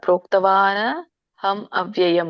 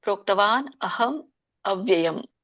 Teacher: ಪ್ರೋಕ್ತವಾನ್ ಆದಮೇಲೆ ಅ ಹಚ್ಚಬೇಕು ಅಹಂ ಮ ಆದಮೇಲೆ ಮತ್ತೆ ಅ ಹಚ್ಚಬೇಕು ಅವ್ಯಯಂ